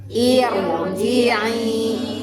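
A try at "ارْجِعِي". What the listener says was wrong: Harusnya tipis irji'i tapi jadi tebal. Irji'i. Nah, kasroh dinu hamzah wasol. Hamzah wasolnya teu aya tanda kasroh tapi dibaca kasroh. Nah, itu kalau ibtida.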